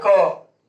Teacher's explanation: हाथ को मुंह के पास ले जाइए, बोलिए क। तो देखिए आपको कम हवा निकलेगा।